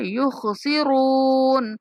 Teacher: नूहुम औवज़नूहुम औवज़नूहुम युखसिरून। युख, खा को पुर करके पढ़ेंगे, रा को भी पुर करके पढ़ेंगे।